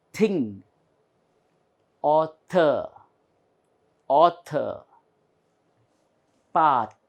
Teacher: the tongue is in between both the teeth